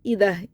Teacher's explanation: علل اف ایدہ، یہ عیدہ پڑھ دیتے ہیں، بہت سے لوگ حمزہ کو عین میں چینج کر دیتے ہیں، تو عیدہ نہیں ہے، ایدہ، ای.